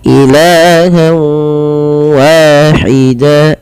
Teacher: Apa yang dimasukkan adalah bunyi suara nun kepada bunyi waw. Awalnya ilahan wahida karena kita masukkan menjadi ilahawa. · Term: idgham bi gunnah